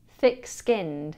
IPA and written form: ˌθɪk ˈskɪnd (à la peau épaisse)